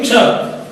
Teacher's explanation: यह है क और श, क्ष। क और श को एक साथ बोलेंगे